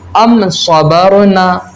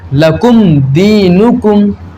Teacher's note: اس میم ساکن میں ہم اظہار شفوی کریں گے، یعنی غنہ نہیں کریں گے